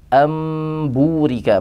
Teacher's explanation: nun mati bertemu dengan ba, am burika menjadi mim yang berghunnah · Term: iqlab